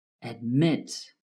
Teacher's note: Admit has two syllables though the last syllable is stressed